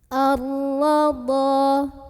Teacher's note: Karena ra berbaris dan barisnya itu di atas fathah. Maka cara membunyikannya huruf ra ini ditebalkan. Pangkal lidah kita angkat. Ar-radha. Dha mad tabi'i karena ada alif. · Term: tafkhim